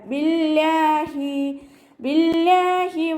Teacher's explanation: അവ്വ എന്നുള്ള നാമത്തിൻ്റെ മുന്നേയുള്ള അക്ഷരത്തിന് കെസ്റ വന്നതുകൊണ്ട് അവ്വ എന്നുള്ള നാമത്തിലെ ലാമിനെ നമ്മൾ താഴ്ത്തി ഉച്ചരിക്കുക, ലൈറ്റാക്കി കൊടുക്കട്ടോ. ബിവാഹി എന്ന് ഉച്ചരിക്കൂല.